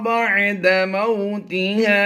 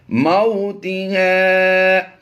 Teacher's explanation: میم واو زبر مو کو لمبا نہیں کریں گے اور تازے تی کو بھی لمبا نہیں کریں گے